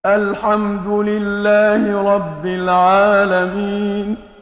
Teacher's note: را کو پھر یہاں پر انہوں نے پر پڑھا، عین کو انہوں نے حلق کے درمیان سے نکالا